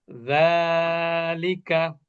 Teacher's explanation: জালটা পাতলা হবে জিহ্বার আগা উপরে দাঁতের আগা